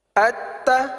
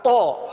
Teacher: تو یہ فرق ہے، تا میں جماؤ نہیں ہے، تو میں جماؤ ہے کیونکہ حرف قلقلہ والا ہے، تا باریک ہے، تو پر ہے کیونکہ تو حرف مستعلیہ کا ہے